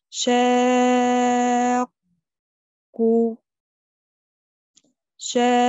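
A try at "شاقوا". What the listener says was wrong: هات المد الطبيعي قو.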